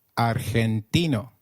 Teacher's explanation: Did you notice that argentino is pronounced as argentino? In Spanish, G, when followed by E or I, is pronounced like a throaty H. So try saying argentino again.